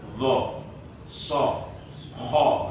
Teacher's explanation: itu kan berat-berat semua. Itu adalah huruf-huruf dari isti'la.